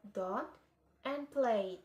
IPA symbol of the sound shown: d